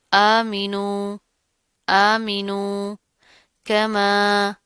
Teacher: کاف باریک پڑھا جائے گا، میم کے ساتھ الف آ رہا اوپر مد آ رہی ہے، اس کو کھینچ کر لمبا کر کے پڑھیں گے